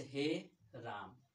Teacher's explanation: उच्चारण में मूल स्वर से तीन गुना समय लगता है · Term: प्लुत स्वर